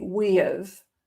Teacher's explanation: there's kind of an intrusive y sound